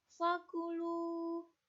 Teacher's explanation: bacaan mad tabi'i, karena domah diikuti wawu